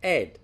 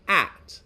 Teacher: in cockney we drop the h sound entirely